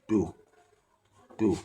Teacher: Àwọn èyí ni ìgbà tí ó wá dàbí pé ohùn wa ó ń sọ̀kalẹ̀ bọ̀ láti apá òsì sọ̀kalẹ̀ wá sí apá ọ̀tún nínú bí a ṣe pè ọ̀rọ̀ yìí. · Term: ohùn ìsàlẹ̀